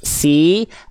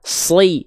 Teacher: Cuman kalau sin itu tipis si, kalau shot itu tebal sli.